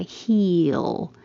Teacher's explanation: The tongue is very high for E, he, and then you come down and for the L, it makes kind of a Y.